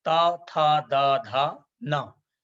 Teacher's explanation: जिनका उच्चारण दांत से होता है जिवा का अग्र भाग दांत में स्पर्श करता है